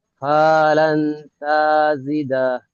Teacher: নুন সাকিনের আওয়াজকে গুণনা এক আলিফ পরিমাণ গুণনা করে পড়তে হয়।